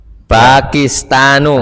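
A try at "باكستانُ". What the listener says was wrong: Pokoknya P itu ba bahasa Arabnya. Bukan fa.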